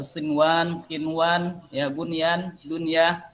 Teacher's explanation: Karena di sini adalah statusnya izhar mutlak. Mutlak izhar dibaca, tak boleh ada gunnah sedikit pun.